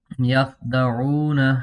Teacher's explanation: یہاں پر خاء میں قلقلہ نہیں کریں گے اور واو مدہ ہے